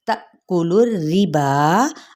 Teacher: اب یہاں پہ تا حمزہ ساکنہ، یہاں پہ جھٹکا دیا جائے گا، تا پڑھیں گے، ٹھیک ہے، اور لام کی پیش کو ڈائریکٹ ہم راس کے ساتھ پڑھیں گے، لیکن را تشدید کیا ہے، نیچے کسرہ ہے یعنی زیر ہے، تو باریک پڑھا جائے گا۔